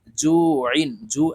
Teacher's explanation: জু একালিপ টেনে আইনকে সাকিন করে ফেলবো